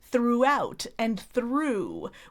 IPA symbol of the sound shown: u